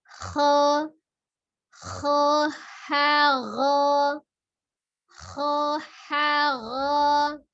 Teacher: Kha dari tenggorokan bagian atas, kemudian turun ha ke bagian tengah, naik lagi ke gha ya.